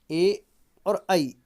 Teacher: ए और ई जो है इनका कंठ और तालू दोनों से होगा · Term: कंठ तालु